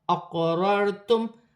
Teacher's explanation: قلقلہ میں سے ہے، قلقلہ کے ساتھ ادا کیا جائے گا، را ساکن سے پہلے زبر ہے، دونوں را موٹی پڑھی جائیں گی · قاف ساکن ہے، حرف قلقلہ میں سے ہے، قلقلہ کے ساتھ ادا کیا جائے گا ، را ساکن سے پہلے زبر ہے، دونوں را موٹی پڑھی